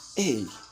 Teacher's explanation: can be used in a high or falling tone as an interjection, expressing surprise or admission of being in the wrong